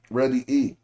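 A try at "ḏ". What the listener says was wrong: I don't see no R on mouth on the top of that. Yeah, it would be just D without the R.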